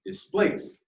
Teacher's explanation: So in the word return, the stress part is turn. In the word displace, the stress part is place.